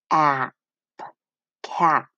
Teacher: This P closes this vowel to make it a short vowel sound